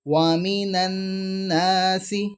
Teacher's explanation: اس کے اندر ہم نے نون پر یاد رکھنا ہے کہ ہماری جو زبان ہے وہ اوپر والے دانتوں کو لگ رہی ہے